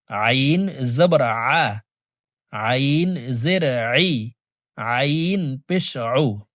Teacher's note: হামজার উচ্চারণ করে পড়া যাবে না হলকের মধ্যখান থেকে উচ্চারণ করব কারণ আইনের মাখরাজ হলকের মধ্যখান থেকে হবে